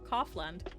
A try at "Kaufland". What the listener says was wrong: No one's coughing here. Like, it's Kaufland.